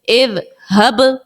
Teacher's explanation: حمزہ ذال زیر اذ ہا با زبر حب اذ حب یہاں با ساکن ہے با حرف قلقلہ کا ہے تو با کو آپ ظاہر کریں